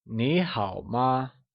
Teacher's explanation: it is said using a mid rising tone for me and a falling rising tone for how and a neutral tone for the question particle MA